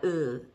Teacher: uh also up high uh but in the back and much shorter